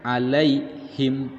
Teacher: Disebut dengan huruf lin saja. Ya mati sebelumnya harokat fathah, ini dibacanya pendek dan dibacanya harus lunak, tidak dibaca panjang ya.